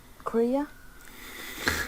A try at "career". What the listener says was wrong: Here, career came out as Korea, but it's career.